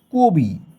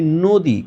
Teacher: কারণ শুরুর অয়ের পরবর্তী বর্ণের হ্রস্বইকার রয়েছে। এভাবে শুরুর অয়ের পরবর্তী বর্ণের হ্রস্বইকার, দীর্ঘইকার, হ্রস্বকার অথবা দীর্ঘকার এই চারটার যে কোনো একটা থাকলে শুরুর অধ্বনি অবশ্যই ও এর মতো সাউন্ড করবে